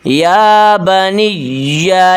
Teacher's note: نون کو یا کے ساتھ ملائیں، یا کو سخت کریں